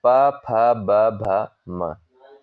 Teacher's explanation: प, फ, ब, भ, म, ये वर्ड जो होते हैं ओष्ठ उच्चारित होते हैं